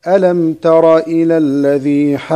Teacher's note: الشيء الأول أن الجيم ستسكن هنا، وإذا سكنت الجيم لابد من قلقلتها، والقلقلة هنا أعلى المراتب